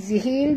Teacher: Zihil di sini, alif lam, qomariyah. Bunyikan lam yang mati dengan jelas.